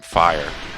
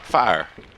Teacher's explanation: the more southern I get with it, the more it becomes 1 syllable.